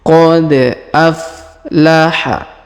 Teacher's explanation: Perhatikan, qad huruf da berharokat sukun maka kita pantulkan.